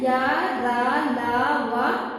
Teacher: दूसरा आपका अंतस्थ व्यंजन। इन व्यंजनों के उच्चारण में जीभ का पूरा स्पर्श मुख के किसी विशेष भाग के साथ नहीं होता तथा इनके उच्चारण में श्वास का अवरोध बहुत कम होता है। · जब हम इसका उच्चारण करेंगे तो हमारी जीभ जो है मुंह के किसी एक भाग से टच नहीं होती है।